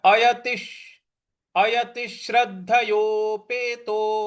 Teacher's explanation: अयतिश अयतिश अयति के आगे जो विसर्ग है त पर छोटी की मात्रा है और जो विसर्ग है उसके आगे श्र है। तो जो विसर्ग है उसका श का ही उच्चारण ले आएंगे